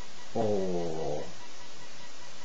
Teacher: my lips stay where they are they don't come out or in my tongue goes up to the roof of my mouth